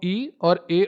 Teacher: जिन स्वरों के उच्चारण में जिभ्या का अगला भाग काम करता है, वो अग्र स्वर कहलाते हैं